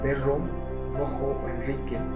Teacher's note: en la zona andina la vibrante o la fricativa sibilante sonora ha ido o ha estado permaneciendo más tiempo en esta zona, en palabras como perro, rojo o Enrique, ¿no?